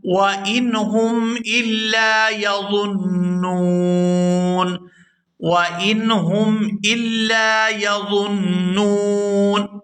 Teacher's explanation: یہاں نون مشدد پر غنہ کریں گے اور آگے نون جو ہے یہ وقف کی وجہ سے ساکن ہو جائے گا.